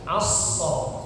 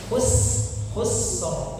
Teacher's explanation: Kalau sh tebal aso. Kalau sin tipis hus khusus ya. Tapi sama suaranya dihabiskan dulu mengalir ya.